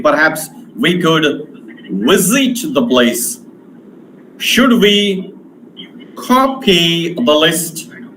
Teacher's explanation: in politeness, in doubt, in some certainty, falling rising tone has been used